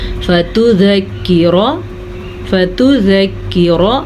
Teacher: را کو پر پڑھیں گے، را کو لمبا نہیں کریں گے